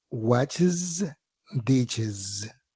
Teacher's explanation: hacen su plural agregándoles el sonido de una vocal más la s vibrada. Tal es el caso de palabras como watch and ditch, que al agregarle la s su plural suena watches ditches.